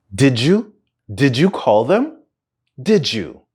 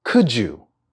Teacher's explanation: Number 2, the linking sound j. When a word ends in a d sound, but is then followed by a word that begins with a y sound, they combine together and create a j sound.